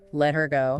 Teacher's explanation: Often that h sound at the beginning just disappears. It becomes silent, especially when it follows another word.